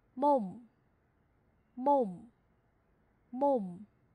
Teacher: 是不是发么的音？么么，在这里呢，嗯嗯，只是没有张口而已，但是都跟么很像啊。在辅音里面么是张口的，在这里嗯嗯收住了▁im▁im。▁来看第三组▁o▁o，▁加上收音之后om▁om▁om，▁大家注意一下，发完之后嘴唇紧闭，那正因为你的嘴唇是闭着的，所以气流从鼻子出去了，有没有感觉出来？再试一下▁om▁om。▁来下一个继续体验，下一个▁mo▁mo，▁加上之后▁mom▁mom▁mom， 因为你的嘴巴闭住，气出不去，所以只能从鼻子出去